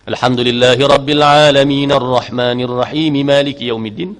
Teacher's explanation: Al-Alamin, ain pada al-Alamin, a pun 2 harakat. Ar-Rahman, ma 2 harakat. Maliki yaumiddin, maliki, ma itu 2 harakat. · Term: mad asli